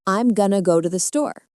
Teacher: You hear gonna and store very clearly, but the little words in between, like to and the, are very quick and soft. They almost disappear. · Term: rhythm